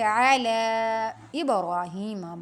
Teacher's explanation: عین کو وسط حلق سے پڑھیں گے